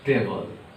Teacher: In vegetable, the sound of letter E is silent.